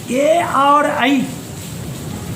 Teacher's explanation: ए और ऐ का उच्चारण स्थान कंठ और ताल। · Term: कंठ तालु